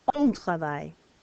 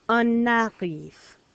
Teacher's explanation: So before a consonant, silent N. But before a vowel, now I hear it. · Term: liaison